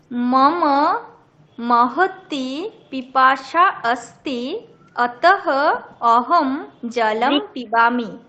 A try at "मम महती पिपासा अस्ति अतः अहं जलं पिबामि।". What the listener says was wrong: समीचीनम्, उत्तमम्।